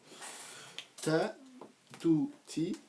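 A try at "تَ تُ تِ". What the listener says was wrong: Voilà.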